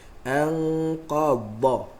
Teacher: Dha, hujung lidah rapat ke gusi. Lidah tak keluar. Anqadha dhahrak, walaupun nampak kalau saya pun tengok kamera ni macam lidah tu keluar, tapi sebenarnya lidah tak keluar.